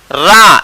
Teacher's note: रा इसको लुंठित और प्रकंपित कहते हैं, और इसका उच्चारण कहां से होता है मूर्धा से।